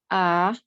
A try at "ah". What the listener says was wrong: Not ah, it's it's more like from your stomach, from here.